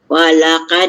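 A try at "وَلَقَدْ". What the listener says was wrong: jangan lebar mulut. Walaqad tarok. Jangan walaka, Kak. Jangan lebar mulut. Walaqad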